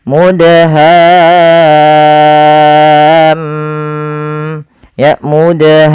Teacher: huruf mim berharakat tasydid maka di sini mimnya ada bacaan gunahnya maka suara mimnya kita tahan ya teman-teman kita tahan sepanjang berapa harakat sepanjang dua harakat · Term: bacaan gunnahnya